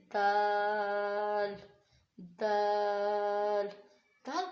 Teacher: ऊपर वाले दो दांतों का ये जो जड़ होती है, इसमें हमारी ज़ुबान लगेगी। ज़ुबान जैसे आपकी ज़ुबान है, जब आपकी ज़ुबान इन दो दांतों की इस जड़ पर लगेगी तो ता और दाल अदा होगा।